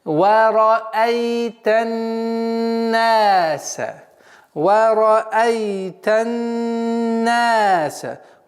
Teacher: Вот звук согласовки фатха. Уходим на солнечный звук нун и удерживаем в размере 2 огласовок. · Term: назализация